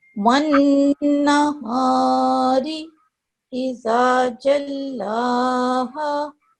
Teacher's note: You have to keep the noon sound in for a bit longer, okay? For 2 seconds at least. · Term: nasal sound